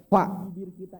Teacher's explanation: Fa, ba, mim, waw. Fa, kalau fa itu satu bibir, bibir bawah doang. Ketemu dengan gigi atas.